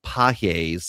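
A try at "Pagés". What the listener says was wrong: The G is silent.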